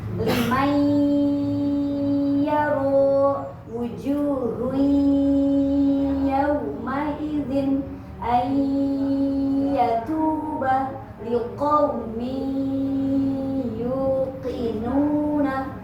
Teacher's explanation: Jadi ada suara masuk ke hidung. Nah, itu namanya idgham bi gunnah.